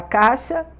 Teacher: aquele outro som vocálico que você vê na mesma sílaba é uma semivogal, porque o som dela é muito fraquinho · já nem pronuncia quase o I, de tão fraquinho que sai esse I